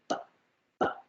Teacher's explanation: So the sound is made by using both your upper and lower lips. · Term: labial